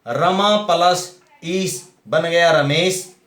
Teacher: आ प्लस दीर्घ ई, आ प्लस दीर्घ ई मिलकर के बन गया ए, तो जो रमेश में आया है, इस तरह से यहां पर क्या है, गुण संधि बन जाती है।